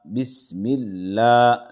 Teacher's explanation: لفظ اللہ سے پہلے زیر ہے، لفظ اللہ کے لام کو باریک پڑھیں گے